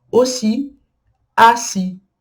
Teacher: Sendo que a última sílaba é a sílaba tônica.